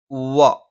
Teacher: രണ്ടു ചുണ്ടും വൃത്താകൃതിയിൽ വെച്ചുകൊണ്ടാണ്